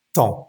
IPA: tɑ̃